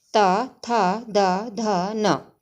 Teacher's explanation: हमारी जो जीभ है वो दांतों का जो आगे का भाग होता है उसको टच करती है